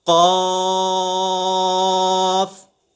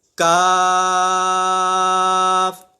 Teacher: جو پہلا قاف ہے نقطوں والا، اسے ہم پر پڑھیں گے، اور جو دوسرا کاف ہے وہ باریک ہے، ہم اسے پر نہیں پڑھیں گے.